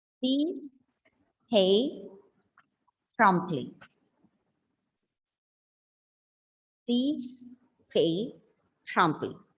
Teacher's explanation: pronounce the pa in such a way that you feel that gush of air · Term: plosive pa